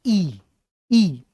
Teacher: उन्होंने कहा ई ना अग्र स्वर है